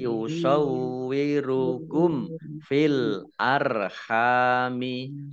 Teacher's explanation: Yusawwirukum. Mim sukun bertemu dengan huruf fa, bacaan idhar safawi dibaca jelas.